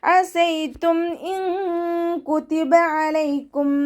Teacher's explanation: നൂൻ സാക്കിനയെ മറച്ചു വെച്ചിട്ട് മണിച്ചോതി കൊടുക്കുക കേട്ടോ. നമ്മുടെ നാവിനെ മുകളിൽ തട്ടിക്കാതെ നോക്കുക. നൂനിൻ്റെ സൗണ്ടിനെ വ്യക്തമായിട്ട് കേൾപ്പിക്കാതെ ഓതുക. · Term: ഇഖ്ഫാൻ്റെ